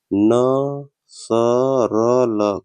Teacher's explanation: वर्त ध्वनियों का उच्चारण जिह्वा की नोक दंत पंक्तियों के ऊपरी भाग स्पर्श करती है